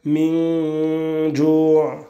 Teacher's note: al-ikhfa et la ghunna qui sera muraqqaqa, qui ne sera pas emphasée